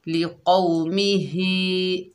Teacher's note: हा जो है सीने से अदा होगा